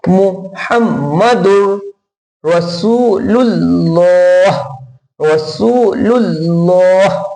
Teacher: موٹا دیسی طریقہ یہ ہے کہ ہونٹوں کو گول کرے ہلکے سے اور ان کو ٹھہرائے, تو اللہ کا نام کا لام موٹا ہو جائے گا